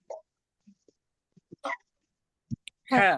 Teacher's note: हलक के दरमियानी हिस्से बड़ी हा अदा होती है। इसे अदा करते वक्त आपके मुंह से हवा बाहर आती है।